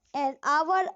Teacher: the H at the beginning of the hour is silent. So we use article N.